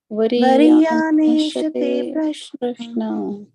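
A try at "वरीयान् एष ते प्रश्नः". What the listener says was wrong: Yeah, you can emphasize on the visarga in the end. Variyaneshate prashnaha.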